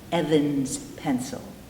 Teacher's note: Because the end consonant, n, vibrates, we would say a Z